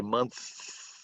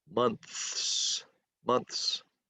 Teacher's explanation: you have to do that TH sound where you put your tongue between your teeth